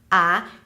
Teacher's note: you start with an open mouth because it's at you know the bottom of the chart that means that the jaw is at its most open position ah the tongue is in the front a and then you